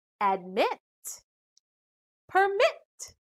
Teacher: the final syllables contain short vowels but still the stress is on the second syllable